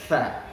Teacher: angin yang keluar ketika menyebutkan huruf tha itu lebih banyak dibandingkan huruf-huruf yang tidak bersifat hamas